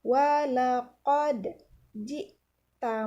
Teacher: dal ini adalah salah satu huruf qalqalah. Maka kita baca dengan dipantulkan.